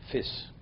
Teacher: They would say a shin like a sin. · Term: Real Lithuanian Yiddish